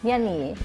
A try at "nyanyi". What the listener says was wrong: I think like at the behind, like the nya was okay, but the ni, a lot of people skip the y. It's just like nyanyi, kind of like nyani. Yeah, nyanyi.